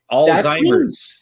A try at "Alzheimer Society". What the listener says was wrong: Alzheimer Society. No S. S.